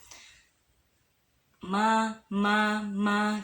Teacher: dia cukup mempertemukan luar luar bibir kita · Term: huruf ma